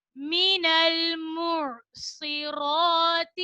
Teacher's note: عین کو حلق کے درمیانی حصے سے ادا کریں گے. را کے اوپر کھڑا زبر ہے, را کو ہم موٹا پڑھیں گے اور کھڑا زبر کو ہم ایک الف کی مقدار کھینچ کر پڑھیں گے.